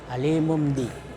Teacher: Ya, dibalik dari tanwin menjadi mim, alimum bi. Dengan merapatkan dua bibir serta mendengung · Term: iklab